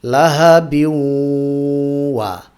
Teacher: গুন্না করার জন্য নাকে আওয়াজ আনবো, একই সাথে মুখের আওয়াজও থাকবে ওয়াওয়ের দিকে ঝুঁকে থাকার কারণে।